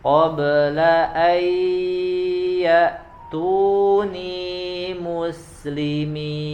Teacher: Nah, Masya Allah ya, tapi itu kurang ditahan di qabla ayyatuni ya, di situ ada nun sukun, setelahnya ada huruf ya, maka dia masuk di bacaan idgham bi gunnah ya, yang harus ditambah kadar dengungnya, tidak terburu-buru